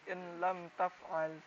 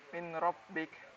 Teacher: idgham bilagunah itu tidak dengung, hanya masuk.